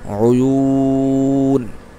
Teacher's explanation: 3 আলিফ হয়ে যাবে, যেহেতু মদের হরফের পর বামে আমরা থামতেছি